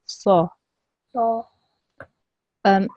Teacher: we have to make sure the saw is a thick and round letter. So we have to make sure that it's slightly thicker when we pronounce it.